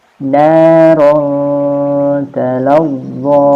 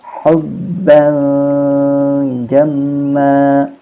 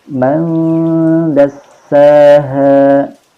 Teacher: suara nun maupun tanwin masih tetap terdengar tetapi samar antara izhar dan idgham. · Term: ikhfa